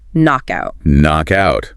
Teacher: We never pronounce the K, it is simply knock.